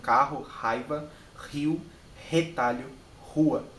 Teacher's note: um r mais seco né um aspirado